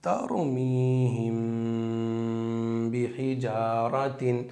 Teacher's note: ناک سے غنہ کرتے رہیں گے ایک الف کے برابر